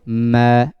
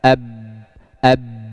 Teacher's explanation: huruf mim termasuk sifat gunnah dan huruf ba tidak memiliki sifat gunnah, maka tidak boleh masuk ke hidung